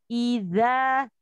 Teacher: Eza Eza i-hajj Jaya lalu huruf dza itu ada magnetnya adalah di ujung lidah yang bertemu dengan dua gigi seri atas huruf dza ketika kita tidak mengeluarkan lidah sedikit maka akan berbunyi